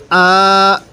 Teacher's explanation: ফা ইন, হামজা খারা জবর আ, এখানে এক আলিফ টান দিব খারা জবরের কারণে